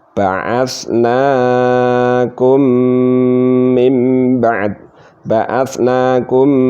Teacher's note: dibaca gunnah walaupun sebentar, ya, baca gunnah, ya, tapi dibaca gunnah. Sebabnya apa? Mim sukun bertemu mim, nah, namanya idgham mutamasilan.